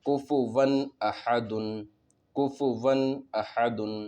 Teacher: نون کو ظاہر کر کے بغیر غنہ کے جلد پڑھیں گے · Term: اظہار